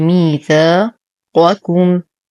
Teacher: نفخم القاف ونخلص الكاف من تفخيمه